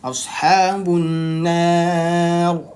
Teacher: Jadi saat disukunkan ya, ra disukunkan itu dia tebal. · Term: tafkhim